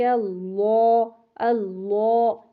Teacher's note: لام جو ہے وہ موٹا ہوگا LAW لا کی ساؤنڈ پہ، اور اس میں آپ نے وہ زبان میں جو ڈپریشن ہوتا ہے وہ محسوس کرنا ہے۔ سبحانک اللہ، اللہ، یہ ڈپریشن محسوس کریں گے، ٹھیک ہے۔